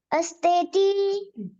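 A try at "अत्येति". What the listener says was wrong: स नहीं है, अत्तेति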